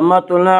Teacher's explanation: حتی مطلع الفجر، مطلع توا کو اوپر پڑھیں گے، توا میں قلقلہ ہوگا۔ اس کا قاعدہ ہے کہ توا میں قلقلہ ہوگا